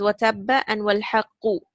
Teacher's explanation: The first ba, which is in tabba, you have ba shadda, which is ba sukun plus ba fatha. So the first ba you will pronounce with sukun, and the second one you have to give a qalqala.